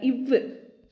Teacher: கீழ் உதடும் மேல்வாய் பல்லும் இணைவதால் பிறக்கும் எழுத்துக்கள்